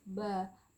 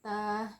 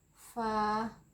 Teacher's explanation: Pangkal lidah tidak naik ke langit-langit ya. Huruf ba tidak. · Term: istifal